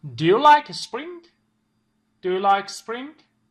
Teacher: خب دوستان همونطور که دقت کردید وقتی که سوالمون با دو و داز شروع میشه سوالمون yes/no question هست و ما rising intonation داریم اونجا